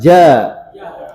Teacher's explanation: tengah lidah dengan langit-langit ya tengah lidah dengan langit-langit